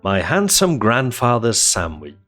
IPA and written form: maɪ ˈhæn.səm ˈɡræn.ˌfɑː.ðərz ˈsæn.wɪdʒ (My handsome grandfather's sandwich)